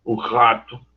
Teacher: Ela, por exemplo, considera que o R inicial pode ser o R dos cariocas e dos florianopolitanos, que é aquele R mais quase gutural